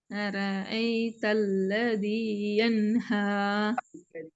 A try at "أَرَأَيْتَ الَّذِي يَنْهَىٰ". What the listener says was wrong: இல்ல الذي கீழ்நோக்கி எடுத்துக்கொள்ளணும். أرأيت الذي ينهى என்ஹா பாத்தீங்களா பாத்தீங்களா பாத்தீங்களா மாறுமுறை என்ஹா பிழை.